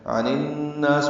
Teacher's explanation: عن الناس میں ادغام شمسی ہے، اب اس میں الف لام نہیں پڑھا جائے گا